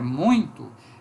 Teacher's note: na palavra muito ditongo nasal decrescente